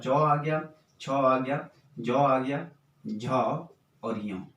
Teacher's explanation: जब श्वास वायु अंदर से बाहर आएगी तो स्पर्श तो करेगी लेकिन साथ साथ संघर्ष करते हुए आएगी, अर्थात घिस कर आएगी। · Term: च वर्ग